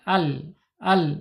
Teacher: Makhrajnya ada di alisan ya. Alisan ujung tepi lidahnya menyentuh langit-langit yang sejajar dengan gigi seri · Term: lam